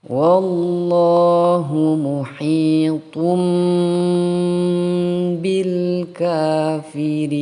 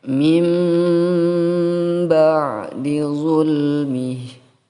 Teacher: Iklab juga terjadi jika nun mati atau tanwin baik fathah tain atau kasroh tain atau dhamma tain bertemu dengan huruf ba, maka harus dibaca iklab. Iklab artinya mengganti suara tanwin atau nun mati kepada seperti huruf mim. Muhitum yang awalnya muhitun bil kafirin menjadi muhitum bil kafirin.